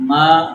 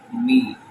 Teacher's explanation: اب اس کو دیکھتے ہیں، دیکھیے زبر اور زیر میں فرق کرنا ہے۔ اب ما می، ما اس کی آواز اوپر جا رہی ہے، می اس کی آواز نیچے آ رہی ہے